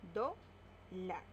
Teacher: La mayor fuerza de voz está en do y también podemos tildarla porque termina en R.